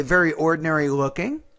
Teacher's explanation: the tone needs to be rising after looking, not falling